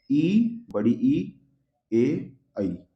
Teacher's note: अब जीभ के अगले हिस्से से बोलो